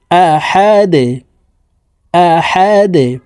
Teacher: হাহা দাল দুই পেশে দুন দালকে ওয়াকফুর ক্ষেত্রে সাকিন করে ফেলবো দাল যেহেতু কলকালার হরফ নিচের দিকে ধাবিত করে ধাক্কা দিয়ে সাকিন করতে হবে